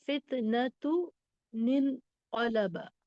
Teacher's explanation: تنوین کے بعد اگر حمزۃ الوصل اور حمزۃ الوصل کے بعد آنے والا حرف ساکن ہو تو تنوین کی ایک حرکت حمزۃ الوصل حذف کر کے مکسور نون کا اضافہ کیا جاتا ہے. اسی کو نون قطنی کہتے ہیں.